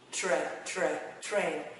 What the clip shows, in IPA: treɪn